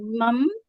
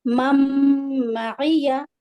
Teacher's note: نون ساکن کے بعد میم جب آتا ہے تو ادغام مع الغنہ ہوتا ہے